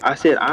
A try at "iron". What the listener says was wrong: I said stop pronouncing the R in iron. It's iron. Iron.